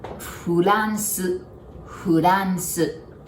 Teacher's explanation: And then R, we don't have R sound, so we pronounce it like L.